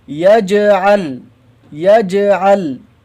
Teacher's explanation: یہاں پہ سمجھ لیجئے کہ جیم میں قلقلہ ہوگا اور لام میں قلقلہ نہیں ہوگا